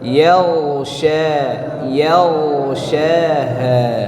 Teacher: Tebalkan ghain, ya, suara ghain tebalkan, naikkan ke atas, jangan dipantulkan, dan alirkan suaranya.